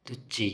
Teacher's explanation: ಚ ಎಂಬುದು ತಾಲವ್ಯ ವ್ಯಂಜನವಾದ್ದರಿಂದ ಕೊನೆಗೆ ಈಕಾರ ಬಂದು ತುಚ್ಚಿ ಎಂದಾಗುವುದು